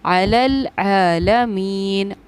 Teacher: آئین کی ادائیگی کو بالکل صاف ظاہر کیجئے، حلق سے ظاہر کیجئے